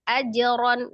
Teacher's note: Ajron, ya, dipantulkan ketika posisi qalqalahnya ada di tengah atau di wasol, maka dia namanya qalqalah sughra, qalqalah kecil saja ya, tidak terjeda, tidak ada hamzah sukun, itu tidak juga membentuk harokat, hanya pantulan saja. Jadi tidak menaikkan huruf hamzah aja, tapi langsung aja, ajron ya.